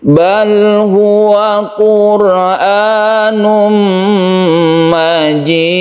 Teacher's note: Tanwin bertemu dengan mim, ini kita sebut dengan idgham bi gunnah, kita panjangkan.